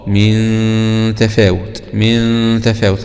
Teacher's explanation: من الحروف الاستفال، يبقى الغنة تكون مرققة